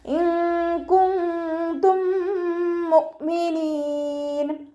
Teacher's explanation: മീം സാക്കിനയുടെ നിയമത്തിലുള്ള ഇദ്ഗാം. സുക്കൂനായ മീമിനെ അടുത്ത മീമിലേക്ക് ലയിപ്പിച്ച് ഒന്നയോടുകൂടി ഓതിക്കൊടുക്കുക. നന്നായി മണിച്ചിട്ട് ഓതിക്കൊടുക്കുക കേട്ടോ. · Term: ഇദ്ഗാം ഷഫവി